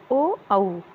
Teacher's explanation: ओ और औ कंठोष्ठ वर्ण है, क्योंकि ये कंठ और ओष्ठ की सहायता से बोले जाते हैं। कंठ के द्वारा जीभ और होठों के कुछ स्पर्श से बोले जाने वाले वर्ण ओ और औ है।